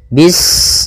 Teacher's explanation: Pada bacaan bis ini, sempurnakan huruf sinnya. Ketika sinnya sukun, ini ada sifat saofir. Dia harus kita alirkan nafasnya. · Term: sifat shafir